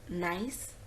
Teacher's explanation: it is a nasal sound the soft palate is lowered the nasal cavity opens up so the air flows through the nose